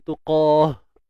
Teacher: Ha ni yang di pangkal kerongkong kita.